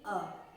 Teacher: अगर हम इनका उच्चारण करें तो ये है अ का अगर आप उच्चारण करेंगे तो वो मध्य से बोला जाता है, जो जीभ का मध्य वाला भाग है वहां से इसका उच्चारण होता है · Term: मध्य स्वर